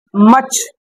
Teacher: British অনুযায়ী আর এর পরে কনসোনেন্ট থাকলে উচ্চারণ হবে না